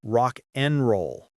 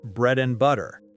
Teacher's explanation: The word and is almost never pronounced fully. We reduce it to n.